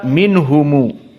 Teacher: Yang pertama pada ucapan minhum, maka di sini mim sakinah dijadikan silatul mim oleh 2 qurra, Ibnu Katsir dan Abu Ja'far.